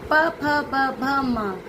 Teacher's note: ये कहलाते हैं ओष्ठ व्यंजन, क्योंकि जीभ हमारे होठों को छूती है बोलते समय।